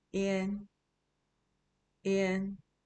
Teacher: The N is not silent, but it's also not stretched.